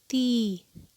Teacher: یا مدہ کی ادائیگی کے لیے زبان کا درمیانی حصہ بلند ہوگا اور جبڑا پیچھے کی طرف کھنچے گا